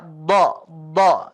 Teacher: konsep do itu kamu enggak mengeluarkan angin tapi lidah kamu lengket